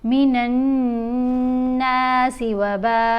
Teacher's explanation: मिनन्नासि वबाऊ, ये जो मद है मद मुत्तसिल है, इसको हमने 5 अलिफ की मिकदार जितना लंबा पढ़ना होता है · गुन्ना कैसे करते हैं? आवाज़ नाक में जाएगी, एक अलिफ की मिकदार के बराबर ठहर कर पढ़ा जाएगा, यानी 2 सेकंड तक आपने आवाज़ को नाक में होल्ड करके रखना है।